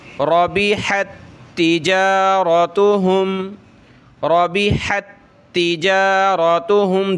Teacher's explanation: اس تا کو ہم نے سختی کرنی ہے تشدید کی وجہ سے